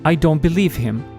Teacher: For example, when you say, "I don't believe him," you're actually saying believe, with a final f. This is because English has a devoicing rule in this context.